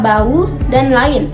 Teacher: Pengucapannya terpisah menjadi dua suku kata sehingga tidak terjadi pergerakan bunyi dalam satu tarikan suara. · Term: bukan diftong